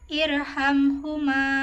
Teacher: Karena ro sukun sebelumnya ada hamzah wasal jadi dibacanya tebal. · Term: ro tafhim